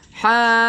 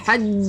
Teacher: Kita panjangkan dulu 6 harakat, kemudian baru masuk ke jim.